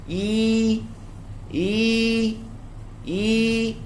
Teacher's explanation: Contohnya huruf ya. Huruf ya dia tidak ada angin, dia tak boleh bunyi yi. Angin tu kena kepung.